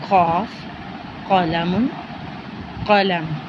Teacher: اور اس کا مخرج زبان کی جڑ کو، یہاں پر زبان کی جڑ سے تھوڑا سا پہلے کا حصہ اوپر تالو سے ملانا تھا، یہاں پر زبان کی جڑ کو اوپر کے تالو سے ملائیں گے تو قاف ادا ہوگا